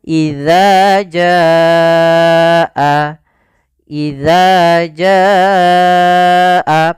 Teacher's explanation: panjangkan dulu janya sepanjang 4 harokat baru dibacaannya. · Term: mad wajib muttasil